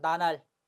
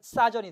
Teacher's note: 체언 리을이 탈락하는데요. 대개 이제 니은이나 또는 지읒 앞에서 리을이 탈락합니다